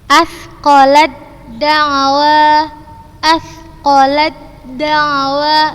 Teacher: langsung ustazah masukkan ke huruf yang berharokat dan ustazah membacanya tanpa gunnah